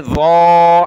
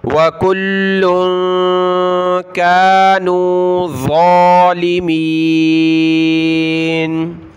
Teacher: ظا کو موٹا کریں، ایک الف کی لمٹ میں کھینچیں گے